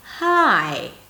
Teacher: The way of saying 'Hi' this way, is a very welcoming, nice, warm, friendly way of saying it. There's always a glide from high to low.